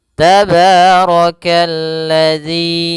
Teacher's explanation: ra-nya dibaca tebal karena dia ra berharakat fathah.